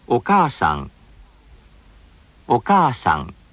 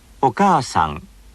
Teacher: the extra length of the vowel is equivalent to one syllable and receives one beat, just like every other syllable. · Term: lengthened vowels